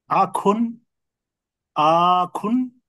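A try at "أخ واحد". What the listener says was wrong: না না, টান, আখুনে টান হবে না স্যার। হ্যাঁ, আমার সাথে বলেন, আখুন অহিদুন।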